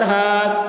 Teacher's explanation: وتقوا، ہا الف زبر ہا، الف سے پہلے زبر ہے، الف مدہ ہوا، اس لیے الف مدہ کو ایک الف کے برابر کھینچ کر پڑھیں گے